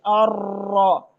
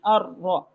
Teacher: مشابہ تکرار کیا ہے بس 1 سے 2 دفعہ آپ کی زبان گھومے